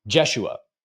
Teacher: also mispronounces the name by putting the accented syllable at the front of the name